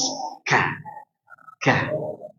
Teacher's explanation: kaf dia suara angin, ya, suara angin yaitu hamas